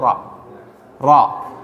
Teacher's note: Getaran getaran suara yang disebabkan bergetarnya ujung lidah ketika mengucapkan suara huruf ro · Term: takrir